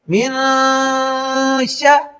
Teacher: شین حروف حلقی اور لام اور را میں سے نہیں ہے تو یہاں نون ساکن پر غنہ ہوگا